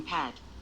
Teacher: The near open front unrounded vowel, A, as in pad.